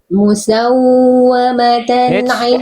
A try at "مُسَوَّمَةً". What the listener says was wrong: Wow, tasdid jangan ditahan di sini. Nabernya kurang. Wow, tasdid. Musawwamatan.